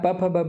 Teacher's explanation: एक होठ दूसरे होठ का स्पर्श करता है। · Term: स्पर्श व्यंजन